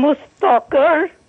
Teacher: كلمه مستمر ومستقر عند الوقف نخلي بالنا ان الراء ترقق